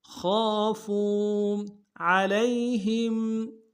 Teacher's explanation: عین کو گہرائی سے ادا کریں گے